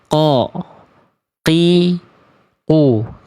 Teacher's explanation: Kalau teman-teman tepat melafalkan qafnya seperti ini, pasti sifat dia adalah jahar. Pasti nggak akan keluar nafas karena makhrajnya tepat.